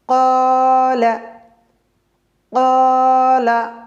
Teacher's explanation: ডানদিকের হরফটা হলো কফ আর কফ টা হলো মোটা অক্ষর তো কফটা মোটা অক্ষর হওয়ার জন্যে এই আলিফ টাও মোটা হয়ে যাচ্ছে